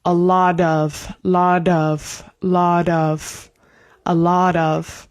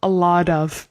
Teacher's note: the T is said like a flap T, which is more like a D in English, which is like an R in Spanish.